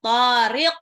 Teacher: Wattariq alif lam samsyiyah yang to-nya 2 harokat. Tariq. Qafnya pantul.